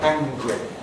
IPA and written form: ˈæŋgri (angry)